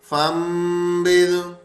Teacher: وہ ایسے پڑھتے ہیں فَانبِذْ، اب نون کی آواز سے میم کی آواز میں چلے جاتے ہیں، فَانبِذْ، اور ہے کیسے؟ فَانبِذْ، ڈائریکٹ میم کی آواز میں جائیں، نون کی آواز آنے ہی نہ دیں، بدل گیا نا نون تو میم سے. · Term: اقلاب کا غنہ